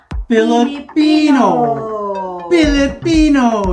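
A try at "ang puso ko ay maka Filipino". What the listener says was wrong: Magaling na siya, guys, mag-pronounce ng words.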